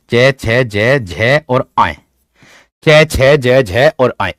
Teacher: जो आपका च वर्ग होता है वो तालुव्य कहलाता है, जो आपका च वर्ग होता है, जैसे मैं कह दूं च, जैसे मैं कह दूं छ, जैसे मैं कह दूं जय, च छ जय झ और आय, च छ जय झ और आय, ये होते हैं तालुव्य।